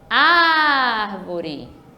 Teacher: Tá vendo como eu demorei mais no ar? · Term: sílaba tônica